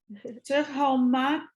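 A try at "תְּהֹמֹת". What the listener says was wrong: It's an O. They're both O.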